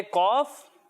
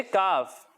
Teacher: حروف مستعلیہ میں سے ہے. تو قاف کو ہم نے موٹا پڑھنا ہے لیکن کاف کو ہم باریک پڑھیں گے